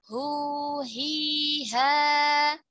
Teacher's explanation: H dia dalam keadaan sukun atau dalam keadaan berharokat, pita suaranya dalam keadaan terbuka. Makanya kalau kita bahas sifatul hurufnya, H itu mengalir udara, ya, mengalir nafas.